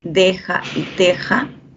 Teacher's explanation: Deja y teja, D y T, dentales